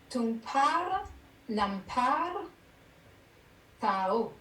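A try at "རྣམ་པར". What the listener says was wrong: Alors, le par, c'est pas un expiré. Mais c'est ton par, ton pas. C'est un pas. C'est pas pas, c'est pas.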